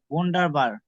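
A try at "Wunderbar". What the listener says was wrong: হ্যাঁ ভন্ডা। আচ্ছা, এখানেও দেখেন ডি এর পরে আর আছে, আবার বি এ এর পরেও আর আছে, তাহলে আমরা এখানে হচ্ছে আর গুলো উচ্চারণ না করে যে ভন্ডাবা, হ্যাঁ ভন্ডাবা। আর বেশিরভাগ ক্ষেত্রে উচ্চারণটা হয় না, ভন্ডাবা, হ্যাঁ ওয়ান্ডারফুল।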